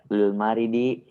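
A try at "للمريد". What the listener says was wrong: Marid yakni sakit ya. Tapi ini murid.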